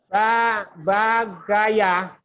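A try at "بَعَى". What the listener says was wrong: Bagaya, bukan. Bagaya. Ya, kalau ada titiknya bagoya. Ini nggak ada titiknya. Baaya.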